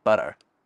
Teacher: It involves tapping your gums just behind your top front teeth. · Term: LR sound